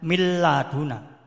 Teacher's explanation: nun juga langsung dihilangkan, tanwinnya juga dihilangkan, tapi masuk ke huruf idgham bilahunah, lam atau ro. Misalnya min laduna, membacanya mil laduna.